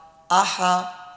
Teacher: کوشش کریں ہا کو حلق سے نکالیں، ہا کا ساؤنڈ حلق سے ادا ہوتا ہے